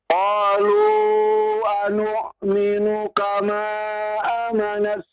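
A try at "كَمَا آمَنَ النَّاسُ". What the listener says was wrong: A-nya panjang. A-nya panjang.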